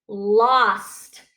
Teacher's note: it's still a closed syllable because it has that short ah sound and not the o